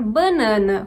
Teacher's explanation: eu falo banana mas tem regiões em que as pessoas vão pronunciar banana com a nasalização também da primeira vogal